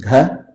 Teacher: If you use a soft aspirated, it becomes gha